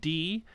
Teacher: labials dentals the d you know you're putting your tongue is the tip of your tongue against the back of your teeth